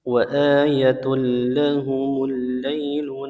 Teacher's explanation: tanwinnya melebur ke huruf lam tanpa gunah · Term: idgham bila gunah